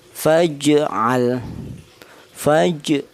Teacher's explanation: Faj di sini terdapat pantulan. Itulah namanya ee qalqalah.